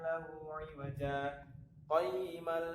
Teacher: Jadi pada kata aywaja dia berhenti sejenak tanpa mengambil nafas, kemudian dilanjutkan pada ayat yang selanjutnya. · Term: saktah